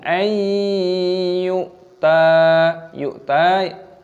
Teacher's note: Mim sukun bertemu dengan alif, idhar halqi, dibaca jelas, minhum ayyuta, nun sukun bertemu dengan ya, yaitu idgham bi gunnah, dibaca berdengung, ayyuta, yu'ta, hamzah sukun dimatikan, dibaca yu'ta